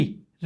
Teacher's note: फिर हमारा री आता है, री जब बोलते हैं तो हमारा मूर्धा, री का उच्चारण करते समय हमारा हम लोग किसका प्रयोग करते हैं, मूर्धा का प्रयोग करते हैं